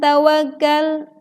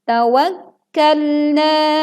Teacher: saat kaf bertasydid kita membacanya kurang menekan, seolah-olah kafnya tidak bertasydid. Sedangkan ini ada tasydid, maka tekanlah dengan terdengar suaranya tawakkalna.